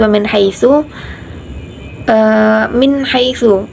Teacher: ada bacaan idhar yaitu wa min haitsu, min haitsu jelas tidak dengung